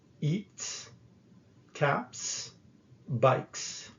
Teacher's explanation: the final s is pronounced as in bus after voiceless sounds